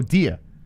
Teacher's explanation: if people from new york go dia they don't say dear they say dia